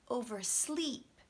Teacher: oversleep stress comes on the second word